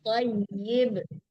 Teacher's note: Thayyib ya, ditasdidkan ya-nya, diperjelas membaca harakat ya-nya ya